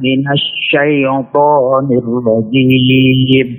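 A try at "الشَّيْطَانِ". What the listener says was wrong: Syai-nya turunkan. Syai, jangan syaito, jangan masuk hidung. Tapi syaito.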